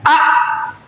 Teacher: huruf alif ada di tenggorokan yang berbunyi a